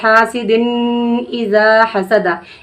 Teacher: یعنی ناک میں آواز کو ہم روک کر پڑھ دیے تو یہ غنہ ہو گیا